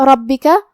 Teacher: را پہ زبر ہے، ہم حرف الرا کو موٹی آواز میں پڑھیں گے